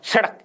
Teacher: जिह्वा का ऊपर का हिस्सा मसूड़े को नहीं छूता, जिह्वा उल्टी हो जाती है। जिह्वा का नीचे वाला हिस्सा, जिह्वा की उल्टी नोक ऊपर वाले मसूड़े को छूकर झटके के साथ नीचे गिरती है। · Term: उत्क्षिप्त